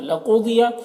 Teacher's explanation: قاف اور ضاد دونوں حروف مستعلیہ میں سے ہے، دونوں کو پر پڑھیں گے